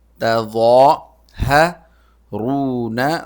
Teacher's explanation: ضا نکالنے کا طریقہ بالکل ذال کی طرح ہی ہے، لیکن ذال باریک ہوتا ہے، ضا موٹا ہوتا ہے. یعنی زبان کی نوک نکالیں نرمی سے اور موٹا یہ لفظ نکالیں. · یعنی زبان کی نوک نکالیں نرمی سے اور موٹا یہ لفظ نکالیں. تظاہرون، را موٹا ہوگا، عین حلق سے